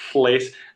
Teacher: the aspiration like sort of affects your lateral L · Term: Welsh L